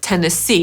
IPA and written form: tenəˈsiː (Tennessee)